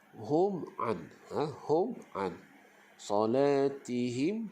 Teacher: Okey, jelas Jadi hukum bacaannya izhar syafawi ini nyata dan jelas. Okay, jadi kita baca hum an, hum an salatihim jadi dia tak ada dengung dah.